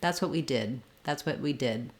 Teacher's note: the D is very light it might be stopped